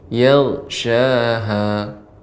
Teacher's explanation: huruf ghain itu juga lebih isti'la'nya. Yal naiknya suara ke langit.